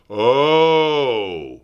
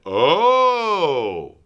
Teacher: the most open sound, oh, where we really drop our jaw and drop our tongue